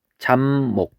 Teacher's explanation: 그랬을 때 여기 비읍하고 미음이 만나서 비읍하고 미음이 만나서 미음하고 미음으로 바뀌는 현상, 이걸 우리는 비음아라고 불렀습니다.